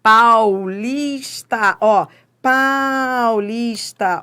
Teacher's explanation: Ó, fui do forte para o fraco, da vogal para semivogal. Então, é um ditongo decrescente e oral.